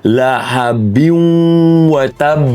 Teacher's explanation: Maka kita kena masukkan nun berserta dengung. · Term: idgham bighunnah